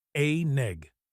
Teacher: The n moves to the front of egg. A neg. Put it all together and it sounds like cook an egg.